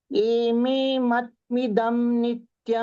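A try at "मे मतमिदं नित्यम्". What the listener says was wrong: மத்து இல்ல மாமா, மத.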